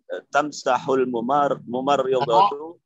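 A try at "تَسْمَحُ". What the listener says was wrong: Tamsahu atau tasmahu? Ya, beda antara samaha dengan masaha.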